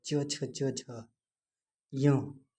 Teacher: जिन वर्णों के उच्चारण करते समय जीभ का मध्य भाग हमारे तालु को स्पर्श करता है, उन्हें तालव्य व्यंजन कहते हैं। इन्हें अस्पर्श संघर्षी व्यंजन भी कहते हैं।